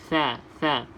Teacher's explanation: Hujung lidah kena bawah. Kalau sa, hujung lidah kena gigi atas ni.